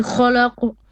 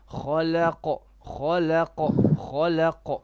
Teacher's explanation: Kha la is flat. Khalaq, and then qaf is heavy.